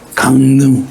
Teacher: 그러면 발음이 너무 어려워요. 그래서 비음화 시키는 거예요. 비음으로 발음하는 게 훨씬 쉽기 때문에. 그죠? 그래서 미음하고 리을이 만났어요.